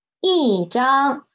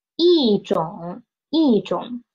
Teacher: It will change from the first tone into the fourth tone. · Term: tone sandy of E